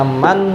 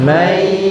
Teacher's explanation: Suara nun mati dimasukkan ke huruf ya. Yang aslinya bunyinya man menjadi mai ya. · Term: idgham bigunnah